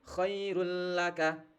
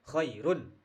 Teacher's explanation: Karena huruf lam itu termasuk huruf idgham dihukum bacaan nun mati dan sukun eh nun mati nun mati dan tanwin yang ada lima itu. Maka suara tanwin atau suara nun mati di run ini harus dilebur menjadi suara huruf lam